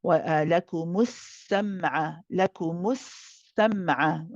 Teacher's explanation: Now here the meme is joined to the sin when we say لَكُمُ السَّمْعَ. Here we prolong the sin as a rakhawa letter. We let it run.